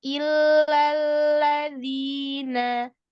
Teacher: La, jangan naik suaranya, tetap di depan, di ujung-ujung lidah.